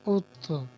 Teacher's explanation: اب یہ طا چونکہ حروف قلقلہ میں سے ہے، اس لیے اس میں آواز لوٹتی ہوئی محسوس ہوئی ہے، بلکہ ہمیں لوٹانی پڑی ہے۔